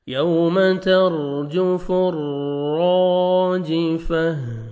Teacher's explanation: ता को हा में चेंज करना है जब स्टॉप करेंगे तो